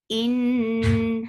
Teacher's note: Noon will get sifa of kunna. This kunna is akmal, so keep the sound in your nose for a longer time. Ni, two counts long.